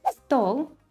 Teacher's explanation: the stress falls on «о»